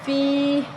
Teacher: یا مدہ ہے، ایک الف کے برابر لمبا کریں گے